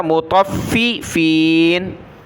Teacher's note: تا کو فا کے ساتھ ملایا، فا کو سخت کیا